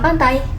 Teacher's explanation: Di kata pantai, T di tengah diucapkan secara lebih ringan atau cepat.